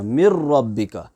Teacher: ادغام تام اس لیے کہتے ہیں کیونکہ وہاں پر نون ساکن اور تنوین کی جو ساؤنڈ ہے وہ 100% مکس ہو جاتی ہے لام اور را میں، اور ادغام بلا غنہ اس لیے کہتے ہیں کیونکہ یہاں پر ناک میں آواز نہیں چھپتی ہے، یہاں پر غنہ نہیں ہوتا ہے۔